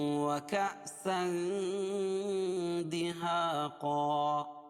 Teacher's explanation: وَكَأْسًا اخفاء حقیقی ہوگا کیونکہ تنوین کے بعد حروف اخفاء کے 15 حرفوں میں سے دال آ رہی ہے تو اس کو ناک میں آواز کو چھپا کر پڑھیں گے